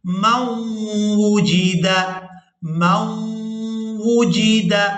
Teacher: یہاں میم کو واو مشدد کے ساتھ ملائیں گے، نون ساکن کو یہاں پر چھوڑ دیا جائے گا